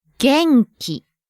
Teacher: This one has a consonant-vowel combination, followed by a standalone consonant, and then another combination syllable.